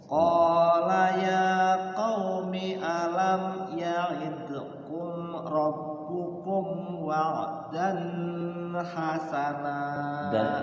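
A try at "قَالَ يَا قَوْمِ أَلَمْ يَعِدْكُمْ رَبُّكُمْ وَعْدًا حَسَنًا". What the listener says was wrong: Dan-nya jangan lama-lama. Wa'dan hasana izhar. Jangan dan hasana. Jadinya ikhfa nantinya. Wa'dan hasana langsung.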